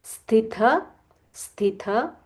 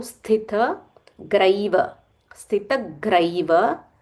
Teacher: There is a half sa and a mahaprana tha.